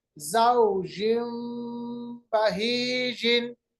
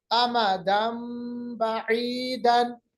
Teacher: नून की आवाज को तब्दील करके मीम की आवाज में लाएंगे, बदल लेंगे, इसको हम इक़लाब कहते हैं।